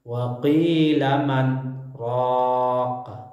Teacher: Bacaan saktah ditandai dengan huruf sin kecil atau dengan tulisan lengkap saktah. Cara membacanya dengan berhenti sejenak tanpa bernapas sepanjang 2 harokat.